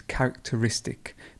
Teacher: it's characteristic so there's almost two stresses in that word